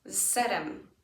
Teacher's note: The change in z almost makes it end up sounding like a double S.